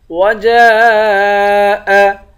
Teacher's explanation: جیم کے بعد الف ہے، الف پر مد ہے، اس مد کو پانچ الف کی مقدار کھینچ کر پڑھیں گے